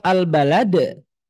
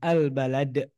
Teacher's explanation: salah satunya huruf dal, sukun, maka harus dijelaskan qalqalahnya